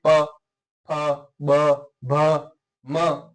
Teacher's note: जब हम इन वर्णों का उच्चारण करते हैं जो प्राण वायु है वो होठों पर आकर के रुक जाती है · जो प्राण वायु है वो होठों पे आकर के रुक जाती हैं और फिर उच्चरित होती हैं। जैसे आप बोल के देखिए प फ ब भ म, तो इसमें होठ पर प्राणवायु रुकने के बाद में आपकी ये ध्वनि उच्चरित हो रही है।